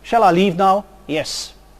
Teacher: if I use a very short syllable as my answer shall I leave now yes this might involve a lack of Interest lack of emotion